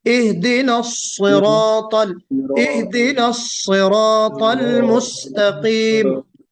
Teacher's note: स्वाद को हमें बहुत मोटा करके पढ़ना है, मोटा यानी पुर करके पढ़ना है